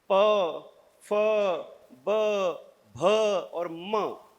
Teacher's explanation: ये शब्द ऐसे हैं कि जिनको बोलने के लिए आपके दोनों होंठ जुड़ेंगे ही जुड़ेंगे। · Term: ओष्ठ्य शब्द